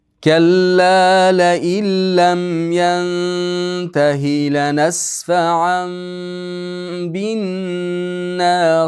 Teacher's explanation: tanvin baga yo'liqib kelgan uchun bu yerda iqilob bo'lyapti. Iqlilobda bitta ba harfi bor. Tanvinimiz mimga aylanib ketadi. Shuning uchun ham yerga mim yozib qo'yilgan.